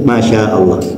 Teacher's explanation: maknya panjang, sya-nya panjang, kemudian a-nya pendek, kemudian Allah